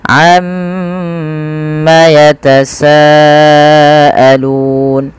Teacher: Kemudian pada falsa di sini ada mad wajib muttasil yang dimana kita harus memanjangkan bunyi sa sepanjang 4 atau 5 harokat dan tidak boleh dikurangi